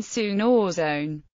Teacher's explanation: air that is forced through a typically narrow aperture that directs a high velocity jet of air against the teeth which results in a high-pitched piercing hissing sound